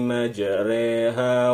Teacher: cara bacanya Ya antara Fatah dan katsrah